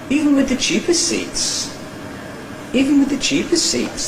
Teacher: that's a rise-fall nucleus on cheap, and you hear that it goes up and then down again before the end of the next syllable, and then the tail is low to the end of the word group. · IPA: ˈiːvn wɪð ðə ˄ʧiːpɪs ₒ siːts